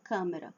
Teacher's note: Câmera, marca tônica na letra a e o a é mais fechadinho